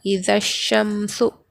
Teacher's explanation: الف اور لام دونوں کو بھی نہیں پڑھیں گے بلکہ زال سے شین کو ملا کر پڑھیں گے، یہاں پر حروف شمسی کا قاعدہ ہوگا، اذا الشمس اس طرح پڑھیں گے۔